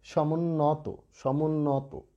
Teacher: শেষের তয়ের যে অ, সেই অটা কিন্তু সংবৃত হবে।